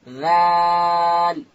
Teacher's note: ذال ادا کیږي د ژبې سر به د لوړې زامې د مخ ته دوه غاښو و سرو ته ورلو